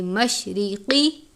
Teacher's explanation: من المشرقی، را کے نیچے زیر ہے، اس صورت میں را کو باریک پڑھیں گے، مشرقی، قاف کو پر پڑھتے ہیں کیونکہ قاف حروف مستعلیہ میں سے ہے